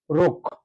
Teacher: আছে অ টা অ এর পরবর্তী বর্ণটা হচ্ছে ক্ষিয় খ আর ক্ষিয় খ থাকার কারণে এই র এর উচ্চারণটা অ থাকা সত্ত্বেও ও হয়ে যাবে